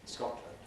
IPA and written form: ˈskɒtlənd (Scotland)